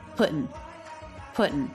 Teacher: Now, he doesn't say pudding with the ing ending. He actually switches the ing ending to an in ending.